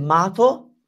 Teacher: if I said mato, there would be a single T like in Spanish